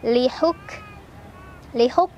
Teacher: Kafnya tertahan dulu suaranya, syiddah dulu ya sifatnya. Baru anginnya belakangan, hamasnya.